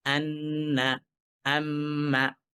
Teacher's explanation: সাউন্ডটা নাক থেকে আসে মুখ থেকে নুনের উচ্চারণ আর নাক থেকে গুন্নার উচ্চারণ